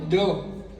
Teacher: જ્યારે તમે ડ બોલો છો ને ડ ત્યારે તમારા જીભ નો જે અગ્ર ભાગ છે ને એ છેક તાળવે જાય છે